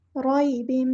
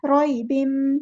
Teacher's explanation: इसलिए हो रही है, एक अलिफ के बराबर रुकना है, रॉइबिन, या के साकिन से पहले ज़बर आई है तो मद लीन हो रही है , रॉइबिन, नरमी से बोलना है, रै नहीं पढ़ना, रॉइबिन, तन्वीन,